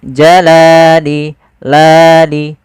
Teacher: Panjangnya adalah dua harakat. Yaitu kita memanjangkan lamnya. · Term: mad thabi'i